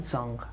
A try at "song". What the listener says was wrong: Song. Corta. Song. Because I hear song, song, long. Oh, that sonido. Oh, it's very strong. Resiste. Resist the temptation, la tentación. Resist the temptation, okay, of saying in English, right?